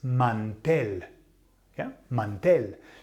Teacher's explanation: the emphasis, the el golpe de voz, falls on the E